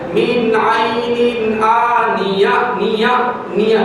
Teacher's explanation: نون کے بعد اگر یا آ جائے نا تو اس یا میں نون غنہ کی آواز آ جاتی ہے